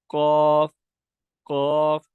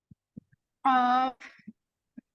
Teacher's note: پیچھے حلق کے قریب، ٹھیک ہے، تب یہ قاف ادا ہوتا ہے